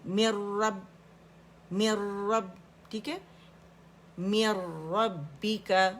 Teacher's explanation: با کے اندر کیونکہ شدہ ہے تو سپلٹس آف سیکنڈ کا پاز دینا ہے ہم نے, کیونکہ پہلے با پہ آواز بند ہو جاتی ہے